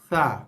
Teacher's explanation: huruf yang paling nipis, ringan dan hembusan nafas paling keluar bunyinya keluar ialah huruf yang mangkuk ada titik tiga tadi.